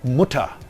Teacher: In syllable final position, the orthographical R is often realized as a low central vowel